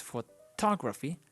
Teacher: the stress is in the to syllable. So it's photography, but we say photograph.